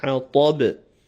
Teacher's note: The ha is strong, the ta is full, and the ba echoes.